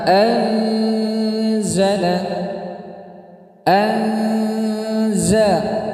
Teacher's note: Jawabnya karena ada huruf nun sukun bertemu huruf zai. Anzala dibaca dengung yang lama. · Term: ikhfa hakiki